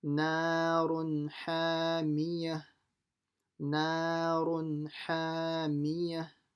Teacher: So make sure you say the na and the ha long.